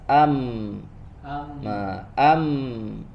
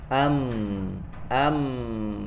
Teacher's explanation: Ya, kalau di gunnah huruf mim dia ada gunnahnya. Am, suaranya tidak langsung habis, ya, tapi ada gunnah dulu, ada dengung dulu